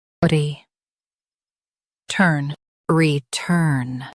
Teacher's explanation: Stress turn and keep re quick.